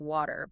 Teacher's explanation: in American English we tend to soften our T's between vowels make them sound almost like D's